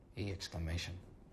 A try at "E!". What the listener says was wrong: It's just E. I think the exclamation is silent.